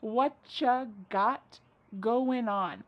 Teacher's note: Whatcha is what plus you. You becomes cha.